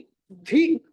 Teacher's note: ధ అన్నది ఆ మహాప్రాణం ఒత్తి పలకాలి